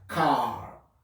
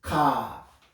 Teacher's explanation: But in British, they don't say the R.